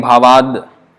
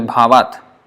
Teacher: So when the next word is starting with a vowel, then the unvoiced becomes voiced. The ta becomes the.